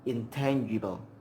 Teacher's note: The alveolar N is followed by an alveolar T, so the sound is intangible. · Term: assimilation of alveolar place